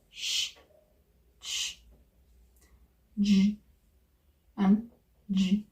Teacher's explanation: These sounds are produced with the tip, the blade, and the front of the tongue against the palate and the back of the alveolar ridge. Sh, for example, is a fricative sound. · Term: palatal-alveolar sounds